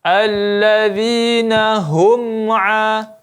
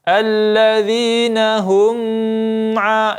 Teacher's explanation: Kemudian hum an, ya, mim mati bertemu ain, idhar syafawi, maka tidak boleh kita gunnahkan atau kita dengungkan